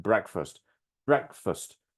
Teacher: breakfast two syllables we strongly stressed the first syllable